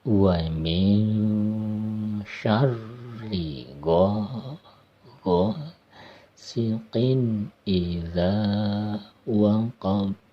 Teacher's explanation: hukum tajwid ikhfa disamarkan, huruf nunnya masuk ke dalam huruf sya, kemudian ada ro bertasid ditekan ya, kemudian baru ada hukum mad, fathah bertemu alif, mad tabi'i ya, atau mad asli.